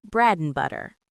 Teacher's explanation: We don't say and clearly. We just say a tiny n sound. This keeps the beat of the sentence. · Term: weak forms